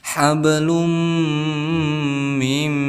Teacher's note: Kemudian di sini ada harakat dhammah tain bertemu dengan huruf idgham, yaitu mim, maka kita hukumi sebagai idgham bi gunnah, didengungkan 2 harakat, boleh 3, boleh sampai 4